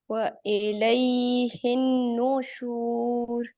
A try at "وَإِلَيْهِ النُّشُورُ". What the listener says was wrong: وَإِلَيْهِ، تھوڑا سا غنہ یہاں پہ اس کی مقدار کو بڑھائیے.